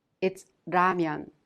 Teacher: you can consider it a sound in between the L sound and the R sound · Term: lir